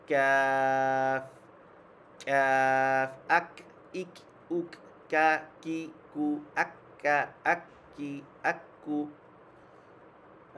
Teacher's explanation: কাফ জিহ্বার গোড়া থেকে সামান্য একটু সামনে আসি